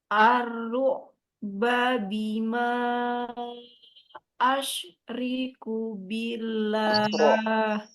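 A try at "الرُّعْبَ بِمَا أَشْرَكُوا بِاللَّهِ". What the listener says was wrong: Nah, bukan asyri ya. Asyro. nya panjang.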